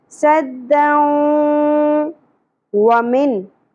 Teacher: तनवीन के बाद हरूफ यमनू में से वाव आ गया तो इदगाम माल गुन्ना होगा, मिलाना भी है और गुन्ना भी करना है।